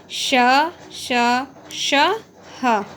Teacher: दूसरा, ऊष्म व्यंजन। इनका उच्चारण रगड़ या घर्षण से उत्पन्न वायु से होता है। जैसे श, श, श, ह।